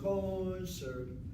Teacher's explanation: If I'm saying concert, I'm hitting the last syllable. I'm not hitting the first syllable.